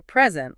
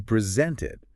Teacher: a present, like a gift, has the emphasis on the first syllable. Right, but if you're formally giving something or showing something, you present it with the emphasis on the second syllable.